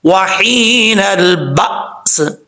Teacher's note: جب وقف کریں گے تو سین ساکن ہو جائے گا